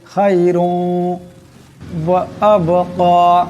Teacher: এক আলিফ পরিমাণ গুণনা হবে খায়রুন ওয়া আবকা এখানে বা সাকিন বা কলকলা হরফ আওয়াজটি টক্কর খাবে